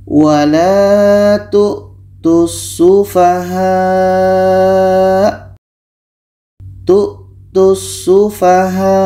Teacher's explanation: Tu dibaca pendek karena terhubung dengan huruf dengan tashdid.